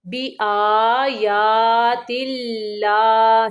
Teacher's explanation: لام باریک پڑھیں گے کیونکہ اللہ کے لام کے پچھلے حرف کے نیچے زیر ہے